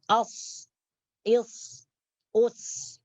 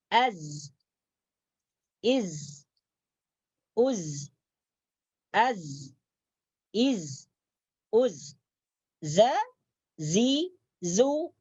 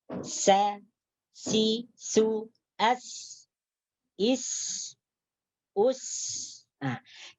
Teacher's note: Ketiga huruf ini, huruf shad, huruf zai, huruf sin, disebut dengan huruf safir, yaitu sifat as-safir. Apabila dibunyikan ianya berdesis. Berdesis atau seperti bunyi suara unggas.